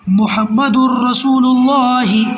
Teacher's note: لام اور را کی صورت میں بغیر غنہ کے ملا کر پڑھیں گے